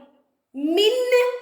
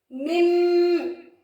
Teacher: நூனே சாக்கின் உள்ள நூனை மீமாக மாற்றி குன்னா செய்து ஓத வேண்டும் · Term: இக்லாபுடைய சட்டம்